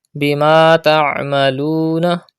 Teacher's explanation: Pronounce ain from the middle part of your throat and stretch waw madda.